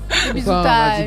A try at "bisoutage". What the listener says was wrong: Non, t'as dit bisoutage. T'as séparé les deux mots, tu vois.